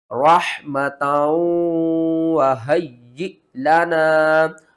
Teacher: اور حمزہ جب بھی ساکن ہوتی ہے تو اس کو ہم نے جھٹکے کے ساتھ پڑھنا ہوتا ہے۔ یہاں پر آپ نے ہا کو نہیں پڑھنا، تا کو پڑھنا ہے، اور تا کو واو کے ساتھ ملا کر پڑھنا ہے۔